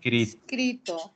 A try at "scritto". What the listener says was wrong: Ojo ahí, no es escrito, es scritto. Scritto. Con doble T.